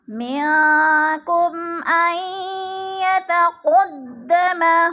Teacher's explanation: جیسے من کم، کم ان آئی، کم پہ اظہار شفوی ہو رہا ہے، میم ساکن کے بعد حروف ہلکی میں سے حمزہ آ رہا ہے تو ادھر اظہار شفوی ہے، غنہ نہیں کریں گے بلکہ میم کو ظاہر کر کے پڑھیں گے